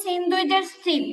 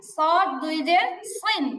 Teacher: সিন দুই সিন একদম normal সিন দুই সিন এটাকে মোটা করে বললে হবে সদ দুই সইন